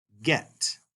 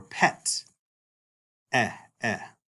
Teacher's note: the sound of epsilon is not like a long E, but a short E, as in the word get, like that E, or pet, eh.